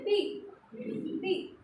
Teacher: जब हम बी बोल रहे हैं तो हमारे दोनों होंठ आपस में टकरा रहे हैं